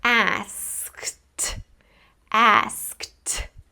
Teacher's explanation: even though this word ends in e d, the final sound is actually like a t. It's ask-ed asked And so, actually this word does end in a consonant cluster.